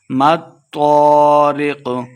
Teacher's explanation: میم کو تو کے ساتھ ملا کے پڑھنا ہے اور تو کو ہم نے موٹا کرنا ہے